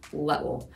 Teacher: In Scottish accent, you usually take down that short I sound, which we would say like little, and it would become little.